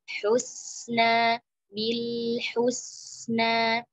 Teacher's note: Kemudian ayat 9, wa kadzdzaba bil husna, sama seperti tadi ha, sempurna dhamma tarik untuk ke huruf sin yang sukun